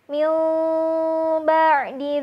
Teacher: maka akan terjadi kaidah penukaran bunyi nun dengan bunyi mim. Sehingga yang terdengar bukanlah min ba'di, tapi min ba'di.